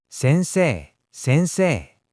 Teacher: Sensei, the EI makes a long A sound. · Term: long vowels